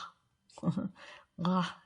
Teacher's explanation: And it's like a breathy G.